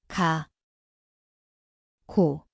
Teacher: Ang lugar ay sa likod ng dila.